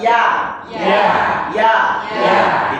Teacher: Itu dari lidah bagian tengah naik ke langit lah. Langit. Ringan.